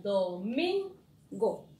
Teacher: la sílaba átona, tenemos do y go. Porque el min es tónica, entonces el resto es átona